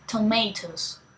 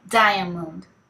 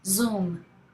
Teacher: Alveolar, articulated with the tip of the tongue.